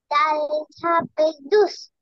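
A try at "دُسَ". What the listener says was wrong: দুস না, দুজ, জোরে।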